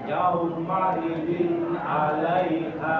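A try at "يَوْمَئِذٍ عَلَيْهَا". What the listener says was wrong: Menyempurnakan dhammahnya di sini. Menyempurnakan wawu sakinah. Ya, yau.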